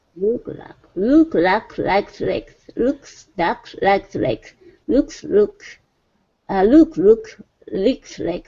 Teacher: make sure that you really get those those la sounds. Don't let them fade into R's.